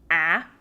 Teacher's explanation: this a lives somewhere between the vowels E and A which you're probably more familiar with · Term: bright short a sound